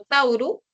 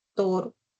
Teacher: un diptongo se vuelve un monoptongo, dos vocales se reducen a una sola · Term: monoptongación